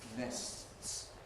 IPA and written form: nests (nests)